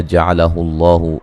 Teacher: لفظ اللہ کو موٹا ادا کیا جائے گا